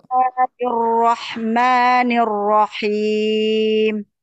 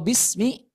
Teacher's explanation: Ya, bismillah itu sin itu terdapat sifat rakhawah. Rakhawah itu suara yang mengalir.